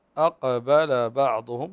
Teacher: فالقاف قلنا سبق ان ذكرنا في حلقه سابقه انها تخرج من اقصى اللسان الحنك الاعلى